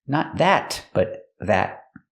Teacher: And the T in that is a stop T.